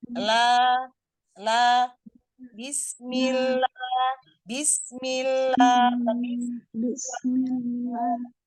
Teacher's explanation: Anna Anna Alla Alla Nun di tengah lam melebar ya jadi suaranya lam itu inhirap dari samping keluar dari samping makanya lam enggak keluar dari tengah ya posisinya rahang agak lebar supaya tipis la sampai dia naik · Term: inhiraf